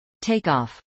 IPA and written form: tˈeɪkˌɑːf (takeoff)